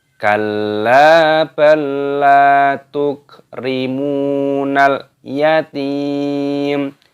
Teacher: Kalla, lamnya ditasdid dan dipanjangkan lam alifnya. Kalla balla, ini sama saja seperti sudah tasdid, makanya dimasukkan balla, balla, lamnya panjangkan lam alifnya.